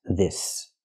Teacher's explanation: the S makes a true S sound. S with no voice.